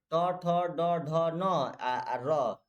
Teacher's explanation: री या र आपका मूर्धा से होता है।